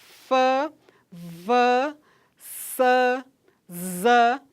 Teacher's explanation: Quando a gente diz f, v, s, z, por exemplo, a gente percebe que o ar passa, mas com uma certa dificuldade. Então, fricativa.